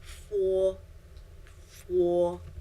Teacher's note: you let a little bit of friction go out